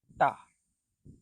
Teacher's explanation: Ta is almost like a T but without the puff of air.